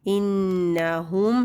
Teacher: نون شد پہ غنہ کریں گے لیکن نون کی جو زبر ہے اس کو لمبا نہیں کرنا